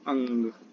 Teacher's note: जो हवा निकलेगी वो मुख प्लस नाक से निकलेगी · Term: अनुनासिक